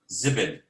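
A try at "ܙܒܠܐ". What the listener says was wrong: Nope. Zibil is the Arabic. They say it in Arabic. And again, to make it in the surah, the last letter, make it a. Zibla. Zibla.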